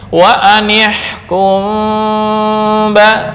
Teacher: iqlab atau ikhfa syafawi bukan berarti tertutup 100% dengan mim sukun. Enggak, tapi tetap ada ikhfa yang tersimpan di dalamnya.